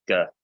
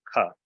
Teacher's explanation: But if you want to practice g, g, k, k, put your hand to your throat box, your voice box. With a g sound, you can feel your voice box vibrating, g. But you make the same shape with your mouth, k. · Your tongue's at your palate. It's just that with a gamma, a G sound, you engage your voice box.